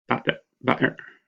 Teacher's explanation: the T may be replaced in Cockney English with a glottal stop